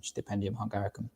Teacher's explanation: In Hungary, you'll find out when you come and study here that the S is pronounced as a sh sound.